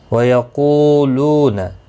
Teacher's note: واو مدہ دونوں کو ایک ایک الف کی مقدار کے برابر کھینچ کر پڑھیں گے